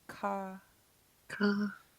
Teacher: it'll be K, and then high tone double A